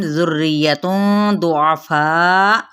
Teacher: ذُرِّيَّةٌ ضُعَفَاء، یہاں پہ کیا ہے اخفاء کیا جائے گا، دود پر ہے. فا کو ہم نے 4 حرکت لمبا کرتے ہوئے حمزہ پہ جھٹکا دے دینا ہے